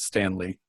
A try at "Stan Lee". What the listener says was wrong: Not Stanley, but Stan Lee.